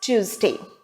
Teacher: the correct pronunciation is Tuesday with the stress on the first syllable tu